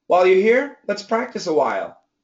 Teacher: I will probably say a while and keep the diphthong